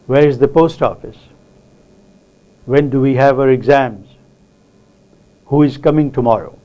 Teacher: Who is coming tomorrow? Now in English, interrogative sentences with all these WH words are normally said with a falling tone. The third type of sentence which is said with a falling tone is exclamatory sentences.